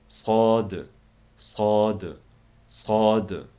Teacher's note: Til uchi ostingi udiltishning uchiga tegib turib chiqadi